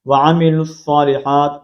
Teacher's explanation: لام کو ڈائریکٹ ہم صاد کے ساتھ کنیکٹ کریں گے، واو کو نہیں پڑھا جائے گا